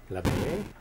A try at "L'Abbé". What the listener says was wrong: You sound like you're saying the B in French.